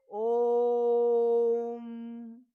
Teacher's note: ओ का उच्चारण जो हमने किया वह लगभग तीन मात्राओं के बराबर कर लिया